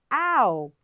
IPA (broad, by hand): aʊ